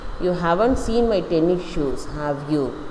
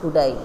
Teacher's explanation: use a rising intonation in the tag it is a genuine question you are not sure what the answer will be